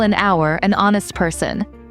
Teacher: even though hour starts with an H, we say an hour because the H is silent